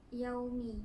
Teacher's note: Yaumi berlaku hukum mad lin kerana huruf waw sukun didahului oleh huruf ya berharakat fathah yang perlu dibaca panjang sebanyak 2 harakat